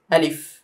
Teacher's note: আলিফটা হবে তাড়াতাড়ি, আলিফে কোনো টান নেই